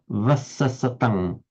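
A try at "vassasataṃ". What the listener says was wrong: Vasasatang. Vasasatang. Yes. The cross between a W and a V in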